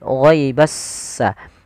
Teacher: alif dan lam yang dia ditulis tapi dia tidak dibaca huruf lamnya sehingga langsung diidgamkan ke huruf setelahnya yaitu huruf sin. Sehingga langsung di huruf sinnya bertasydid. · Jadi s-nya seakan-akan ada dua. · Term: alif lam syamsiyah